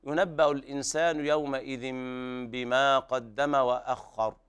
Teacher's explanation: وهنا الراء مخففة الوقف عليها بالتخفيف